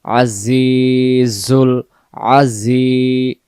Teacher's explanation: এখানে জায়ের জেরটাকে আমরা এক আলিফ টেনে পড়বো জের বামে ইয়া সাকিন থাকলে তখন আলিফ টেনে পড়তে হয় জের